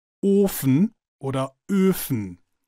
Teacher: Normalerweise werden beide Vokale geschlossen ausgesprochen, wie zum Beispiel in den hochdeutschen Wörtern Ofen oder Öfen.